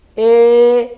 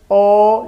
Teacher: E, la lengua va adelante, O, la lengua retrocede.